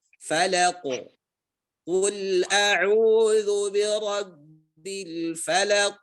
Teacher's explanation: Falaq, fa-nya tipis, lam tipis, qa-nya tebal.